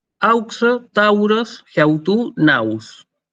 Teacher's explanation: Este diptongo entonces se lee au